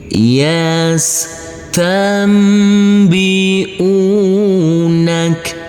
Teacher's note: Kita uraikan dulu. Huruf nun yang bertemu dengan huruf ba, karena ini adalah bacaan iqlab, maka huruf nunnya berubah menjadi huruf mim sukun.